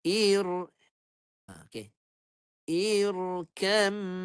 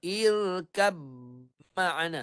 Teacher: ba masuk dalam mim secara sempurna yang hanya tinggal bunyi mim saja